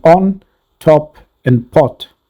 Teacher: refers to the O sound as in on top and pot its position says that this vowel is a back open vowel